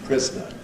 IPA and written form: ˈprɪznə (prisoner)